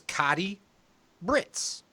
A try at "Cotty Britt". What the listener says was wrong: No S. Britt.